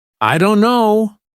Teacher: The T sound is dropped completely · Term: dropped sounds